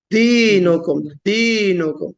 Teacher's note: دال میں شدت بھی ہے جہر بھی ہے